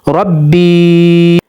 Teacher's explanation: यहाँ पर या साकन हरूफ मद्दा है, तो यहाँ पर इसको 1 सेकंड तक लंबा करेंगे